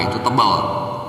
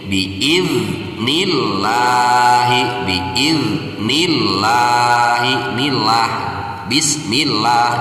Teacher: lafaz Allah di sini harus dibaca tarkik atau harus dibaca tipis karena didahului oleh harokat kasroh. Berbeda dengan lafaz Allah ketika didahului oleh harokat patah atau harokat domah, itu harus dibaca tebal.